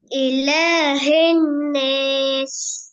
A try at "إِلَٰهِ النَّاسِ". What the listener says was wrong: ஹே அல்லஹி இலாஹின் நாஸ் ஹி ஹன்னாஸ்ங்கிறது பிழை. ஹே வரக்கூடாது, ஹி தான் வரணும்.